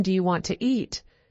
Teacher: Sometimes sounds are dropped like the t in want to.